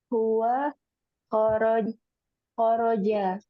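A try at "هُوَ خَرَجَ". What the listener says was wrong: Nah, Masya Allah.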